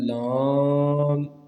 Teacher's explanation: اچھا جی، لام کا جو مخرج ہے زبان کا کنارہ اور ضواحک سے ثنایا تک کے مسوڑوں سے ادا ہوتا ہے